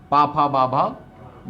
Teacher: ओष्ठ यानी कि ओंठों से बोला जा रहा होगा